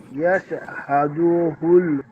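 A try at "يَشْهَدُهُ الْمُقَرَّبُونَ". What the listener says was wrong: এই যে হাদু টান হয়ে গেল, টানটা হবে না।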